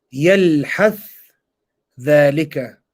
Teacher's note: The first one, Idgham of the tha into the dhal